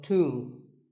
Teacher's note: the B is silent and the O is pronounced with an oo sound